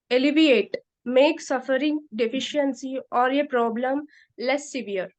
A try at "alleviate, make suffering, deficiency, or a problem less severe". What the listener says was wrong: No, no, actually, when you read alleviate, make, you should give some time. Then read suffering, deficiency, or a problem. Then, in fact, you need not read like this. You should say alleviate, make less severe.